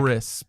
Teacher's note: The word crisp starts in the back, crisp, and then rolls all the way forward until you make the p with your lips.